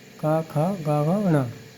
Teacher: उच्चारण करने पर जीभ का पिछला हिस्सा कंठ से छूता है, उसे हम कंठ व्यंजन कहते हैं